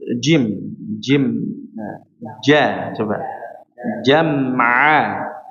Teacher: jadi murni dari tengah lidah yang ditempelkan ke langit atas secara rapat dengan rapat